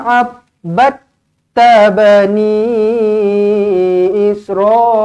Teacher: Bani ni dibaca dengan panjang 4 ataupun 5 harakat.